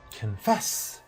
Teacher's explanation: Look at the first syllable. It's not A, it's schwa. Confess, and the second syllable is stressed, both in American and British. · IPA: /kənˈfɛs/